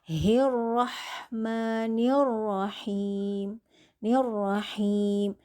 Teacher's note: Nah itu berlebihan dalam takrir, itu juga menyalahi dalam karakter di huruf ro ya, yang pada hakikatnya hanya diucapkan sekali getar